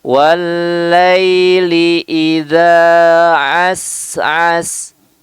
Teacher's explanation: huruf sin ini juga memiliki sifat hams ya, mengalir udara ataupun angin ya, kemudian disempurnakan dengan sifat sofir, desis ya.